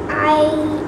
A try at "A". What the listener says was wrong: No, the sound of I, you're going to use the first sound of I, A, okay?